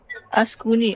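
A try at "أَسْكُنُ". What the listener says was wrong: Jangan baca baris bawah. Tak ada baris bawah.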